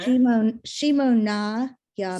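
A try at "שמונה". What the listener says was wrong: so this is just shh. There's no two dots, okay? Shmona. There's an ah here.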